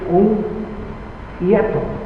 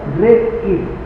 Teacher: Porque reír es un hiato. Ahí el encuentro de una vocal media con una vocal alta, pero el acento fonológico recae sobre la vocal alta